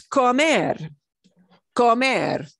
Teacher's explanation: when we pronounce the infinitive, we put more punch or more stress on that last syllable. It's not comer, it's comer, comer, okay, comer.